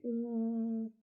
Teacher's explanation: it's a back vowel, the tongue goes back